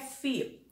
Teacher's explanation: A palavra desafio, a sílaba mais forte, a tônica é fi. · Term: sílaba tônica